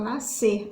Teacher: SC, nascer, na hora da nossa fala, a gente muito dificilmente, né, consegue pronunciar nascer. Então, a gente fala nascer, a gente tira o S aí